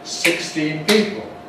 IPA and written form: ˌsɪkstiːn ˈpiːpl̩ (sixteen people)